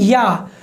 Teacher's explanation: उच्चारण में जो आपकी आवाज़ निकलती है उसकी शुरुआत जो है ई से होती है, या। तो ई एक स्वर है, जबकि या को व्यंजन में रखा गया है, तो इसीलिए इसको अर्ध स्वर कहा जाता है, या।